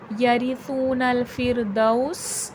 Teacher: سین میں صفیر کی آواز آئے گی، یعنی کہ سیٹھی کی آواز آئے گی